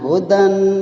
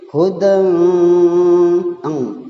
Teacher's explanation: Jadi harus suaranya dengung, suaranya harus berada di hidung, suara ng eng. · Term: ikhfa